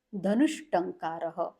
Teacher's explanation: विसर्ग के बाद अगर ट ठ आ जाता है तो विसर्ग चेंजेज टू श हो जाता है यानी शॉर्ट कोन वाला श यहां पे हम लोग लिखेंगे जैसे